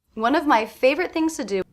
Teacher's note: I definitely hear one and fave as being stressed. Of my is very quick, very different than one and fave.